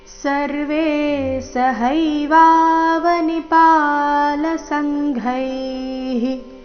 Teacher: ಚರಣದ ಕೊನೆಗೆ ಘೈ ಮಹಾಪ್ರಾಣ ದೀರ್ಘ ಅದರ ನಂತರ ವಿಸರ್ಗದ ಉಚ್ಚಾರಣೆ ಹಿ ಎಂದು ಬರಬೇಕು.